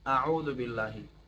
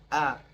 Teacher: میکنن اول از اعوذ بالله شروع شروع شروع میکنیم اعوذ بالله حرف اولی حمزه است از قسمت اول گلو خوانده میشه